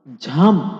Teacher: বেশি বাতাস বের হয় এবং শব্দের উপর একটু বেশি জোর দিয়ে পড়তে হয়। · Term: মহাপ্রাণ ধ্বনি